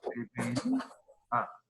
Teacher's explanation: aquí se rompe el diptongo porque la I, que es vocal débil, lleva acento. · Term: hiato